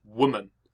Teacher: woman that has a stressed syllable followed by an unstressed syllable